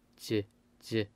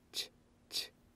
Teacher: Jiut consonant. There is a voice, j, j. But the chiut consonant is an unvoiced consonant, ch, ch.